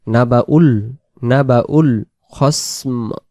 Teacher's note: এই দুই অক্ষর এখানে সাইলেন্ট অবস্থায় চুপ হয়ে থাকবে, এর কোনো কাম নেই। এই হামজার পেশ আমরা লামে মিলে দেব